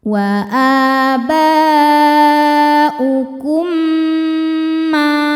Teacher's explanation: Sebab mim sukun bertemu dengan mim berharakat hidup. Cara bacanya mim pertama dimasukkan ke mim yang hidup disertai bunyi dengung. Jadi bunyi m yang ditahan. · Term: idgham mimi